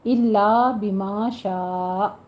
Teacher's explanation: الا اور بما پہ الف مدہ ہے، 2 کاؤنٹ کیجئے منہ کو کھولتے ہوئے، اور شاء اس کو 5 کاؤنٹ کر لینا ہے، اور آخر پہ حمزہ کی ساکن جھٹکے کے ساتھ آواز آئے گی۔